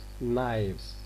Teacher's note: Since we are going to add s, another morpheme to it, which is going to be pronounced as z, voiced